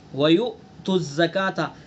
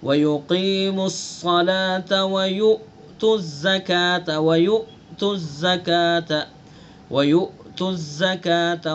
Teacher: حمزہ کے اندر جو صفات ہے اس کے اندر شدت بھی ہے، یعنی سانس ایک دم بند ہو جائے گا، آواز بند ہو جائے گی